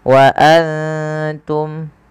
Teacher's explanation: Kemudian wa antum, ada nun sukun yang tidak berharokat bertemu ta, kita baca dengan bacaan ikhfa, yaitu cara membacanya menyamarkan suara nunnya kepada huruf ta.